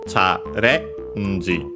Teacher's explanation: it's accented actually on the re